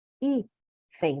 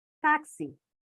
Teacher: É paroxítona, certo? Ou seja, a penúltima sílaba é mais forte